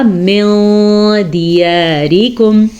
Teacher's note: ساتھ ہی ہمارے پاس اخفاء کا قاعدہ ہے. نون ساکن کے بعد دال ہے جو کہ حروف اخفاء میں سے ہے, تو پھر ہم نے نون ساکن کی آواز کو چھپایا غنے کے ساتھ. ہم نے پڑھا من دیارکم, دال زیر دی, لمبا نہیں کرنا زیر کو کیونکہ صرف اور صرف زیر ہے.